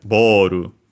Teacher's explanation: Then last but not least, we have ball which becomes boru in uh Japanese with a longer vowel of course o in this case and then ru because of course we don't have the l sound becomes the closest one which is the Japanese r and then the additional at the end boru.